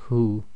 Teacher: the light ha coming from the bottom of the throat, so nice and soft